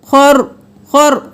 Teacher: رو 1 بار ادا ہوا